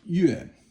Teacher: Yue is fourth tone, and it means moon.